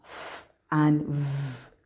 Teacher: They are classified as labiodental. That is, the lower lip and the upper teeth are the organs for the articulation of these sounds. We have F and V.